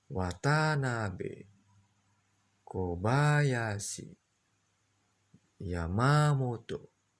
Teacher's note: nama keluarga orang Jepang dengan aksen dari mulai naik ya datar. Wa ya, Watanabe, Kobayashi, Yamamoto.